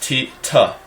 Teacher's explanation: Tau or tav is a T sound, regular T sound made in the teeth.